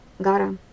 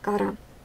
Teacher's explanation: Но эти звук «г» и «к» произносятся похоже, только когда произносится звук «г», слышен и голос, и шум, поэтому он звонкий, а когда произносим звук «к», мы слышим только шум, он глухой. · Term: согласный звонкий